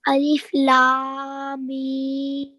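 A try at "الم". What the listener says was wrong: Good, well done. Try to elongate a little bit more. So you need to try to get to that 4 second.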